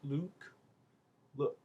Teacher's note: the look is more open and it's more relaxed, especially around the lips